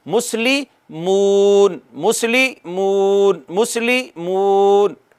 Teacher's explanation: ایسی واو جو ساکن ہوگی اور اس سے پچھلے حرف کے اوپر پیش ہو، اس کو ایک الف جتنا کھینچتے ہیں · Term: واو مدہ